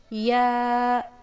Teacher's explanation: وسط زبان اور بالمقابل اوپر کے تالو سے · या वस्ते जबान और बिल मुकाबिल ऊपर के तालू से